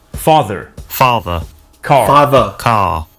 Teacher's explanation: Notice that the final R sound is not pronounced in British English. Father ends in a simple schwa vowel like father.